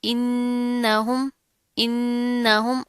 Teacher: आगे नून है, तशदीद आ रही है, गुन्ना करेंगे और इस हमजा को इस नून के साथ मिला देंगे, ठीक है।